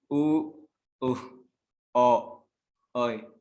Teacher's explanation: the lips are plus round, like the rounded vowels u, o, oi, and the glide w